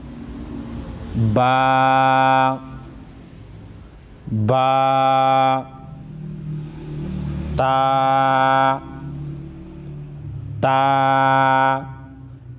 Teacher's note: با اور تا کو ایک الف کے مقدار کھینچیں گے تاکہ تلفظ صحیح ہو جائے